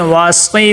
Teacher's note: آگے واسقی، واؤ کے اوپر زبر ہے، صاد کے نیچے زیر ہے، واسقی. صاد کو موٹا کر کے پڑھیں گے